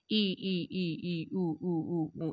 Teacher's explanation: संवृत स्वर वे स्वर होते हैं जिनके उच्चारण में मुखद्वार लगभग बंद रहता है।